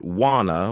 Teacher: Some people pronounce it want to. Others pronounce it wanna with more of an o sound.